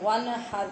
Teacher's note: نون ساکن پہ اظہار حلقی ہو رہا ہے، لیکن قلقلہ نہیں ہونے دینا کہ وانحر پڑھیں آپ، وانحر ان سورت کے آغاز میں ہم نے جو انا پڑھا تھا، اور اس میں یہ فرق ہے کہ وہاں نون غنہ کے ساتھ الف جڑا ہوا تھا، اور یہاں الف نہیں ہے، یہ گول نون ہے۔